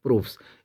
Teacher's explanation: ये हमारी voiceless consonant जो है उनके साथ स जुड़ेगा तो स ही रहेगा।